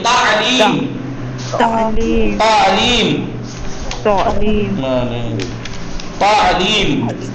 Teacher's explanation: تو کا مخرج وہی ہے جو تے کا ہے مگر منہ بھر کے